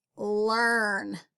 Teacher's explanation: this r took over the ea and changed it into an r sound